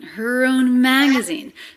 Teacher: So her and own, less stressed, a little flatter, leading up in pitch and energy to the stressed syllable mag.